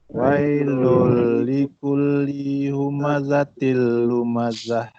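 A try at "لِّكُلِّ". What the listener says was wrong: Li yang kedua tak panjang. Wailul likulli humazatin.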